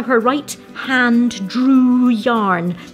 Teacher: listen to these lovely long vowels as he pulls the wool out